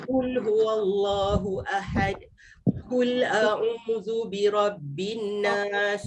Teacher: Jadi kul, dia tak bunyi dari belakang lidah, tak bunyi Q tu, dia jadi bunyi K.